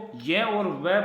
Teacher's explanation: वे वर्ण जिनके उच्चारण में जीभ को कोई संघर्ष नहीं करना पड़ता, अर्थात जीभ आसानी से जिन वर्णों को उच्चारण कर देती है उन्हें हम कहते हैं संघर्षहीन।